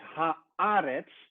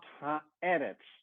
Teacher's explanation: The word is eretz, but it's when the article, when het lidwoord er dus voorkomt, verandert de klinker, the vowel in the word eretz, and it changes to the vowel of the article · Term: harmonization